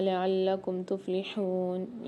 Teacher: تفلحون میں ہا کی آواز کو واضح کر کے پڑھیں گے کہ باریک ہا ہے اور اس میں سیٹی کی آواز بھی واضح ہوتی ہے